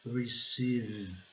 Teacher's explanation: o E tem o som de I, o I prolongado, né?